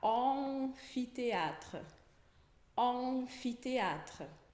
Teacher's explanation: é som de O, como se fosse um vovó, O, mais um Nzinho. Você vai anasalar o som de O. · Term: som de ON